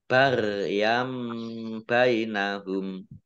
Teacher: Ya fathah tanwin, bertemu dengan huruf ba, bacaan iklab. Fathah tanwinnya langsung dibaca mim.